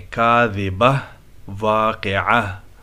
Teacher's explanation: جہاں پر اس طرح تا ہو اور اس پر ہم وقف کریں تو وہ تا جو ہے نا ہا میں بدل جاتا ہے، اور ہا کی آواز پڑھیں گے